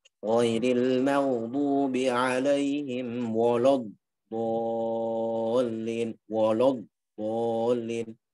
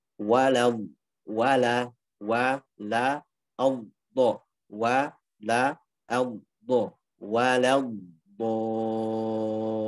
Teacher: Jadi wawnya tipis, lamnya tipis, baru dotnya tebal.